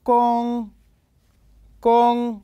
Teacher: مستوى الصوت. نلاحظ أنه ثابت فتكون النغمة الأولى